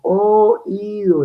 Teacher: la O es abierta y la I es cerrada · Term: hiato